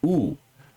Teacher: And the placement at the at the right upper hand side indicates that it is a back high vowel